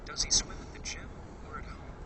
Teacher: In either or questions, the answer is one of the two items from the question. The speaker's voice goes up on the first item and down on the second item.